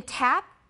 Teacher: the voiceless alveolar stop